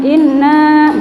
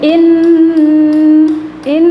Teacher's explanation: dibaca guna ialah yang pertama tadi Nun yang bertasydid atau sabdu cara membacanya nunya ditekan dengan kuat dan ditahan selama tiga harokat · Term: dengung